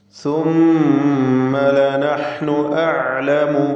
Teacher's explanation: മീം മുശദ്ദദ മണിച്ചുകൊണ്ട് ഉച്ചരിക്കുക